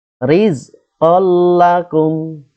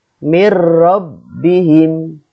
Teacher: Rumusnya, apabila ada nun sukun atau tanwin bertemu dengan salah satu huruf yang 2, yaitu lam atau ro. Ya, cara membacanya meleburkan nun sukun ke huruf berikutnya tanpa gunnah. Singkatnya, masuk dengan tanpa dengung. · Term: idgham bila gunnah